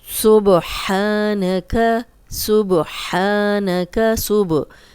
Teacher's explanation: बा पे जज़म है, हिला के पढ़ेंगे। कलकला वाला हर्फ है, बस आपने ध्यान ये रखना है इन 5 हरूफ का कि जब भी इन पे जज़म आएगी तो हिला के पढ़ेंगे।